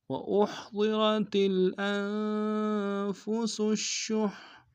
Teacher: ضاد کو موٹا ادا کریں گے، را کو موٹا ادا کریں گے